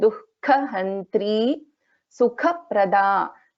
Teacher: So Dukkha Kha is a Mahaprana and it is also after the Visarga.